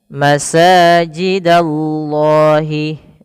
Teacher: ada sin berharakat fathah bertemu dengan alif. Maka di sini mad thabi'i panjangkan dua harakat. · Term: mad tabi'i